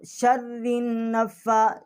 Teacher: اب اس میں ہم شر النفا، شین جو ہے را کے ساتھ تشدید کر رہی ہے، اب را جو ہے اس کا مخرج جو ہے یہ اس کو موٹا کر کے پڑھنا ہے